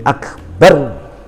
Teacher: Karena dibaca berhenti, maka dibaca sukun. Yang tadinya dhamma di sini kita sukunkan, kita matikan ro-nya karena waqaf, berhenti. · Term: ro sukun